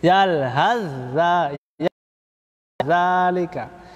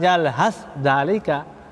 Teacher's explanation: Sa-nya dileburkan ya kepada huruf za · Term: Leburnya sempurna